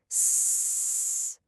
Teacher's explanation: See, just air, no vibration. That's an unvoiced sound.